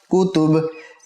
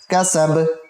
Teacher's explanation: बा के ऊपर वक़फ़ की सूरत में कलकला होगा साकिन होने की सूरत में